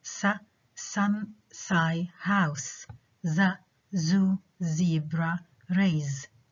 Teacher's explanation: the alveolar fricatives are formed by the tip of the tongue nearly contacting the alveolar ridge. The tip of the tongue articulates with the alveolar ridge, and we said the alveolar ridge is the part just at the back of your front teeth.